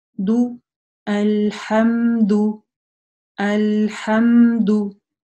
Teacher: Опять же, внимательно не оглушаем, ничего подобного не делаем. И вытягиваем губы.